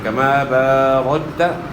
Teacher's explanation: چھوٹا کاف اس میں قلقلہ نہیں ہوگا، موٹا کاف جو ہے اس میں قلقلہ ہوتا ہے